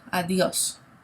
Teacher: the D sounds like a TH, okay? So try putting your tongue on your top tooth, kind of over your top tooth to make the TH sound, like the, and you'll get a better pronunciation, okay?